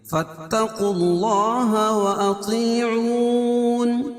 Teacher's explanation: فاتقوا اللہ لکھا ہے لیکن یہ الف جو ہے نہیں پڑھی جائے گی، فا کو تا میں ملائیں گے